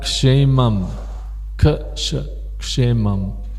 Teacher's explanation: Now that's something we don't normally see in English, a k with a sh sound.